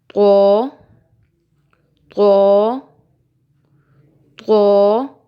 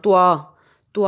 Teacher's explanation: بچوں یاد رکھنا ہے آپ نے ایک دو باتیں کہ طو کی ادائیگی موٹی ہوتی ہے، آپ نے اس کو موٹا پڑھنا ہے. اس کی ادائیگی کے دوران آپ نے حرف واو کو بیچ میں نہیں لے کے آنا